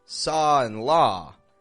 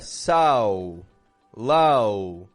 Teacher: I'm actually only just making one motion. I'm dropping my jaw, keeping my tongue kind of low in my mouth, and I'm getting this ah sound.